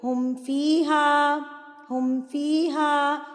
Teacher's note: میم ساکن کے بعد با اور میم کے علاوہ کوئی اور حرف آ جائے، بالخصوص واو اور فا آئے، تو میم کو ظاہر کر کے ہم پڑھیں گے، یعنی کہ ہم یہاں پر غنہ کامل، یعنی کہ ہم نے یہاں پر کوئی غنہ نہیں کرنا، ہم نے اظہار کر کے پڑھنا ہے، فوری سے اس کی ادائیگی کرنی ہے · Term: اظہار شفوی